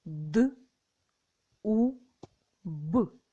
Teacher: перший звук д твердий приголосний